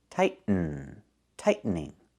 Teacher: you can make a stop T, tight, and then go to the N, tighten, tightening.